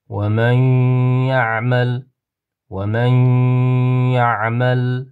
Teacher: Sukunlik nunni g'unnali idg'om harfidan yaga kirgizib dimoq bilan, ya'ni g'unnali qilib o'qiymiz.